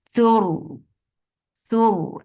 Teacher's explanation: ra will be heavy because there is dhamma before it, and ra will get sifa of tawassut.